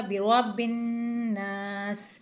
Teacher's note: پارا ہے تجدید والا حروف ہے، غننے والا حروف ہے، تو یہاں پر غنہ بھی کیا جائے گا، برب الناس۔ نون کو ایک الف کے برابر کھینچا جائے گا، کیونکہ نون کے بعد الف آ رہا ہے، یہ الف مدہ بن جائے گا، برب الناس۔